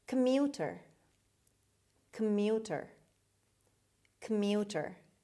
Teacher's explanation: the stress is on the second syllable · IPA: /kəˈmjuːtər/